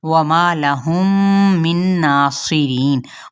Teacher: و ہونٹوں کی نا تمام گولائی سے